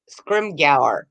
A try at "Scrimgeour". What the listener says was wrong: It's a D. The G is actually a D. Yeah, so it's Scrimgeour.